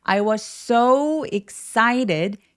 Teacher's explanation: was의 s와 so의 s가 만나서 혀의 위치가 같기 때문에 한 번만 발음합니다. 그래서 was so 나눠서 발음하지 않고 I was so excited 라고 해보세요.